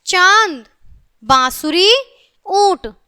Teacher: चंद्र बिंदु का जो उच्चारण है नाक और मुंह दोनों से होता है